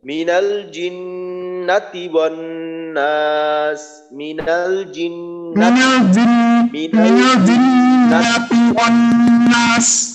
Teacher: জিন্নাতি এখানে এসে যেন জিন্নাতি টান হয়ে না যায় নুনের মাঝে